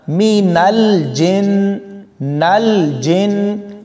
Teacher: نون کو لام کے ساتھ ملاتے ہوئے کلکلا نہیں کریں گے